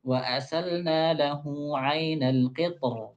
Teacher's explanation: Nah, kan ta-nya tebal, ra-nya tebal. Jadi mudah gitu, tebal-tebal.